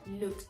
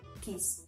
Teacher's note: la terminación ed va a sonar solo como una T